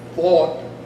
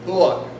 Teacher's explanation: a significant part of the New York City vowel is not simply the raising or the lowering of the 'aw' vowel but the fact that it glides inward too